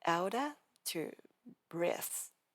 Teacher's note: open your mouth for outer and then snap closed and release for breath